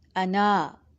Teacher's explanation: صرف نون پڑھا جائے گا، الف نہیں پڑھی جائے گی۔ نون کے بعد جو الف ہے، اگر اس کو ملائیں گے تو یہ الف مدہ بن جائے گا، یہ لمبا ہوگا ایک الف کے برابر۔